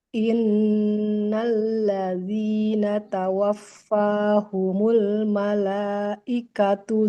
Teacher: taknya domah tanpa waw di depannya. Jangan panjang ya Bu, ya. Hati-hati.